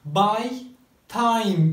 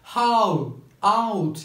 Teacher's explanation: bu seslerin en önemli özelliği bir hecesinde 2 ayrı vowel sesin olmasıdır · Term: diphthongs